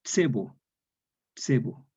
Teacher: En el romance español, la E cerrada queda E, y esta consonante postpalatal se transforma en la Edad Media en una Z sorda antigua. Se pronuncia como una TS